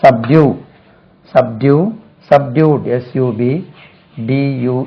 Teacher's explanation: Stress lies on the second syllable.